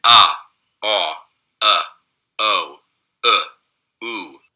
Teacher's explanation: these are the back vowels, and they're going from low to high